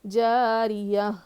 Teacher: را پہ زیر ہے، باریک پڑھیں گے اس کو اور جلدی پڑھیں گے ، یا پر زبر